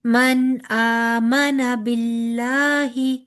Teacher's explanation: کھڑی زبر ہے نا، تو 2 کاؤنٹس لمبا کریں گے. من آمنا باللہ، ٹھیک ہے.